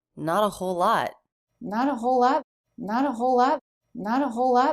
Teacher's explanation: L Sound the word lot begins with the l sound so we link those two words with just one l sound